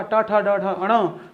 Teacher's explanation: ट वर्ग के अंतर्गत आने के कारण इस अण का उच्चारण स्थान आपका हो जाएगा बेटा मूर्धा।